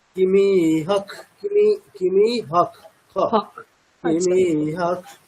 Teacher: বিসর্গের পরে ক থাকলে আমরা কি করি? বিসর্গটাকে আমরা সন্ধি করে খ এর মত উচ্চারণ করি। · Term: বিসর্গটা উচ্চারিত হবে খ